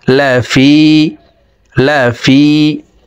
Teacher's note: জেরের বাম পাশে জজমালাইয়া মদের হরফ, ডান দিকের হরকতকে এক আলিফ টানিয়া পড়িতে হয়। তো এই জের ওয়ালা ফাটি জজমালাইয়ার সাথে এক আলিফ টেনে পড়তে হবে, নিচের দিকে ধাবিত করে এক আলিফ টেনে পড়ব।